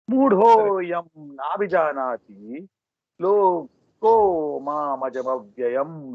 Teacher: you see the visarga changing into the okara